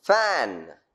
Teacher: a voiceless labiodental fricative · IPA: /fæn/